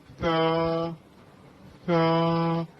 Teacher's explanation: زبان کی نوک اوپر اور دانتوں کے درمیان ہلکی سی رکھیں اور ادا کیجیے